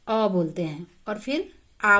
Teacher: अ बोलने में जो समय लगा उससे दुगना समय आपको आ बोलने में लगेगा।